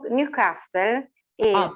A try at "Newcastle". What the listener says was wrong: Be careful with the pronunciation, because here is Newcastle. Yes, forget the T.